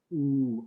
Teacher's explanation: Similarly, like with the oo sound, you can see my lips here as well. Ooh, my lips are kind of rounded when I'm making that oo sound at the back